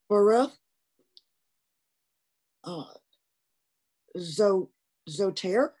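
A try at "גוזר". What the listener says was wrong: It's a gimel at the beginning.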